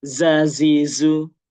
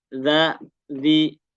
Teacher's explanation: Tapi kalau dzal karena dia digigit dikit jadi enggak keluar safirnya.